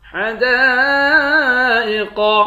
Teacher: دال کے بعد الف ہے، اس الف پر مد ہے، اس مد کو پانچ الف کے مقدار کھینچ کر پڑھیں گے، قاف کو موٹا پڑھیں گے۔